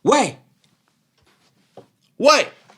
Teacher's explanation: fourth tone if you want to sound like you're trying to get someone's attention